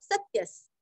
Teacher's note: विसर्ग का उच्चारण आधा स